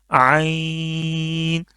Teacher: हलक का जो दरमियान वाला हिस्सा है जहां से हा निकलता है वहां से ये निकलेगा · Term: आईन